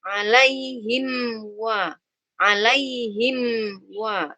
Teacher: Mim dua bibir juga. Hanya bedanya kalau mim tertutup, wawu terbuka. Maka jangan sampai ketika ada mim sukun bertemu wawu, belum tertutup bibirnya, sudah dibuka duluan bibirnya.